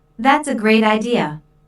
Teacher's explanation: notice the emphasis on great